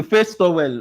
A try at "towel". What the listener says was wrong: It's towel. It's not tile. It's towel.